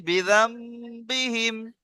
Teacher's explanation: নুন সাকিনের পরে বা এসেছে, তাই নুন সাকিনকে মিমের দ্বারাই পরিবর্তন করে একালি পরিমাণ গুণনা করে পড়তে হয়। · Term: ইকলাব